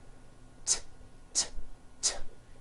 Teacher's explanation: It's unvoiced. Your vocal cords are not vibrating. T, t. Now don't change a thing with your mouth.